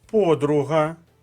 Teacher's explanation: подруга наголос на першому складі